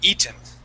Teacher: that word would be eaten with the accent at the very beginning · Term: stress